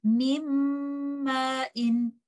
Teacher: We hold the gunna for some time, and this is how we recite it.